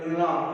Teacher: நம்ம நாக்கு வந்து அந்த அன்னத்தோட முன்பகுதியை தொடுவதால் நா பிறக்கின்றன. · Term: ரன்னகரனா